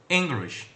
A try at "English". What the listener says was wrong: It's not English. It's not. There's no English. It's turning out to be 3 syllables. It's just 2 syllables. Say English.